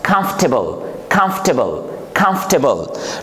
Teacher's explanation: in this word again, the letter R, it is silent and we pronounce comfortable, comfortable, comfortable, not comfortable. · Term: R is silent